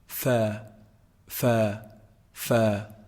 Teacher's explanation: combining the edge of the upper incisors when they hit down on the inside part of the lower lip.